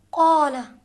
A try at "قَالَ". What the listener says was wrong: اب یہ نرمی سے لگایا، سختی سے، ماشاءاللہ۔ آپ تلفظ کریں قال کو،